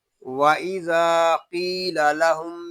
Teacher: وَإِذَا قِيلَ لَهُم میں ذال کو ایک الف تک کھینچ کر پڑھیں گے کیونکہ یہاں الف مدہ ہو رہا ہے. قاف حروف مستعلیہ میں سے ہے اس کو پر یعنی موٹا پڑھیں گے اور قاف کو ایک الف تک کھینچ کر بھی پڑھیں گے کیونکہ یہاں یا مدہ ہو رہا ہے.